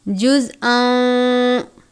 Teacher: زا ساکن ہے لیکن زا کو سختی سے پڑھتے ہیں